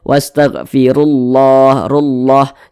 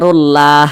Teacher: yang memiliki tanda baca domah atau tanda baca tanda baca fathah maka lafaz Allah dibaca takhim dibaca tebal